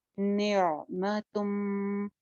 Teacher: तुम पे गुन्ना हो रहा है इदगाम का, तनवीन के बाद मीम है